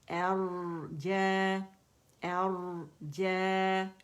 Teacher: را موٹا ہے اور ساکن ہے تو خوبیاں ساری واضح ہوں گی, تو اس کی تقریر واضح کریں گے.